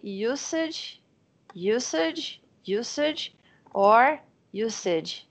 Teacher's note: But we have to pay attention because it doesn't have a Z sound, it's an S sound